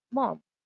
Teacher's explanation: So mom becomes like a falling tone. It's a angry tone. So there's like a strong fall.